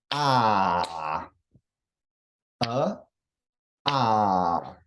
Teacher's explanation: there's long vowels that get two beats, like ah, It's it's elongated. That's why they call it a long vowel.